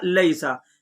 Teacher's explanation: پھر ہے لیسا، لام یا زبر لئی، سین زبر سا، لیسا، لام کے اوپر زبر ہے اور آگے یا ساکن ہے، تو یا ساکن سے پہلے اگر زبر آ جائے تو کیا قاعدہ ہوگا آپ کو یہ سمجھنا ہے، اس میں حروف لین کا قاعدہ ہوگا، ٹھیک ہے۔ یا ساکن سے پہلے زبر ہے اس لیے یا لین ہوگا، یا لین کو نرم آواز کے ساتھ جلدی ادا کریں